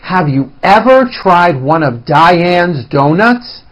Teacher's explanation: with increased loudness a higher pitch and sometimes a longer duration listen to my intonation and notice how I slowly step up and then I work my way down again